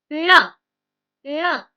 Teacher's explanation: can you feel that nasal sound and the retroflex r?